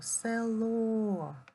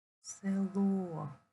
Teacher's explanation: наголос падає на о